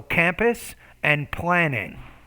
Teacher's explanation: those two P's, those are bilabial consonants. You want to work on pronouncing the P more clearly.